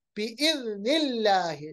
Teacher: लाम को बारीक क्योंकि अल्लाह से पहले जेर